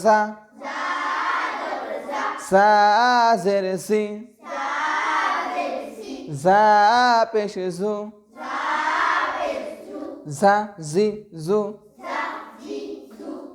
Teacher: যা সামনের নিচের দাঁতের আগা হতে শীষ সহ পাতলা ভাবে আদায় হবে।